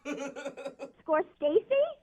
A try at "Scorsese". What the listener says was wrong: No, not Stacy. Scorsese. No, there's no T.